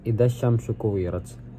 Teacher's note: Pertama ada alif lam syamsiah, karena lam tidak dibaca karena bertemu huruf syamsiah yaitu shin, dan kemudian ada idgham syamsiah karena lam diidghamkan dengan huruf sya yang termasuk huruf syamsiah. Kemudian kuwirat tersebut ada huruf qoknya yang dibaca qalqalah, yaitu qoknya dibaca mantul ketika sukun di akhir kalimat.